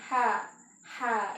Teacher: Huruf ha itu adalah huruf yang dikeluarkan dari pertengahan tenggorokan, yang mana kondisi pita suara itu terbuka. Jadi ketika kita mengucapkan huruf ha, itu letaknya di pertengahan tenggorokan.